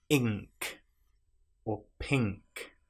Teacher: our tongue is touching the roof of our mouth at the back rather than at the front. With n it's touching our mouth at the front the roof of our mouth.